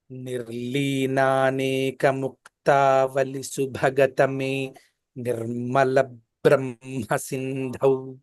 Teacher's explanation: తర్వాత ల తర్వాత వచ్చినటువంటి బకారం రెండు ఉన్నట్లుగా చదవాలి